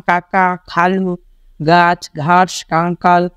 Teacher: তালু সো আশা করি তোমরা বুঝতে পেরেছ এখানে দেখো কণ্ঠ ব্যঞ্জন যেসব ব্যঞ্জন ধ্বনি উচ্চারণের সময় জীবের পিছনে অংশ উঁচু হয়ে আলজীবের কাছাকাছি নরম তালুর সাথে বায়ুপথে বাধা সৃষ্টি করে সেগুলোকে কণ্ঠ ব্যঞ্জন বলে · যেমন কাকা, খালু, গাছ, ঘাস, কাঙ্কাল প্রভৃতি শব্দের ক, খ, গ, ঘ, কণ্ঠ ব্যঞ্জনের উদাহরণ। সো অর্থাৎ জিভের পেছনের অংশকে নরম তালু যে বাধা সৃষ্টি করে সে বাধা সৃষ্টি হচ্ছে কণ্ঠ ব্যঞ্জন